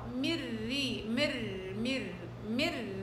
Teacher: نون مدغمة بالراء الراء مكسورة إذا مرققة